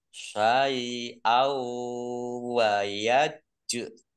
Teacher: Fathah tanwin bertemu dengan huruf wawu, bacaan idgham fi gunnah, masuk dengan mendengung, yaitu mendengung wawu. Ditahan dua harokat, ya, biar tampak dengungannya.